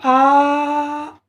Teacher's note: जब आ तो पूरा खुल गया गला, तो आ का उच्चारण करने में पूरा गला खुल रहा है